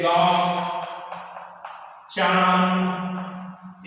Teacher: एक अनुनासिक है, अनुनासिक जिसको चंद्र बिंदु भी कहते हैं, इसे चंद्र बिंदु भी कहेंगे। और नाक और मुंह से इसका उच्चारण होता है, जैसे गांव, चांद, इस तरह से नाक मुंह दोनों से उच्चारण होता है।